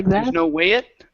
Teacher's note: when you say the word it you have to bring your voice up it has to jump